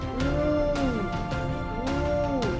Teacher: It is a high vowel. The tongue is close to the roof of the mouth, but it is at the back.